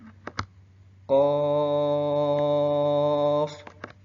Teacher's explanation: qof baca panjang 6 harakat